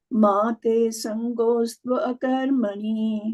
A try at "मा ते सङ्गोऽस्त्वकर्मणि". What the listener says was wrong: Like if you're saying mate saṅgostva, then you cannot say akarmaṇi.